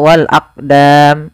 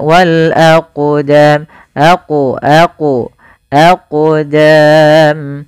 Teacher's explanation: Maka ketika ada huruf qf atau yang semisalnya yaitu huruf qalqalah, maka cara membacanya yaitu kita memantulkan huruf qof-nya yaitu kita pantulkan